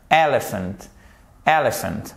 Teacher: Ça signifie que votre accent tonique, il est sur la première syllabe qui comprend ces deux premières lettres.